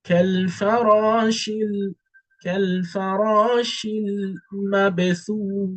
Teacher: The ba is having a qalqalah because it's a letter of qalqalah.